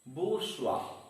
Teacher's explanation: has two syllables and the stress is on the first syllable bourgeois stress is on the first syllable